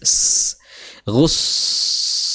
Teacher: Suara saofir dan suara mengalirnya nafas. Saofir itu suara berdesis ya, desis gus seperti itu.